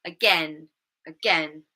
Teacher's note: The word stress is on the second syllable.